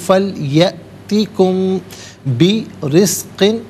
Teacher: طعاما فَلْيَأْتِكُمْ ملا کر پڑھیں گے، فَلْيَأْتِكُمْ یا میں آپ دیکھیں حمزہ ساکن ہے، جھٹکے کے ساتھ پڑھا جائے گا، فا علیحدہ، لیاتی علیحدہ، کم علیحدہ، ملا کر پڑھیں گے فَلْيَأْتِكُمْ۔ میم ساکن اس کے بعد با آ رہا ہے تو میم ساکن کو غننے کے ساتھ پڑھیں گے